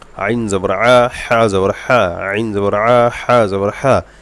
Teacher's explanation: জবর হা, আইন জবর আ, এই দুইটা হলো দুই নম্বর মাখরাজ হলকের মধ্যকান থেকে আইন হা উচ্চারণ হয়